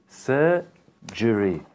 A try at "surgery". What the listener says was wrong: You're saying je. Surgery. Like Sir John. Sir John. Surgery.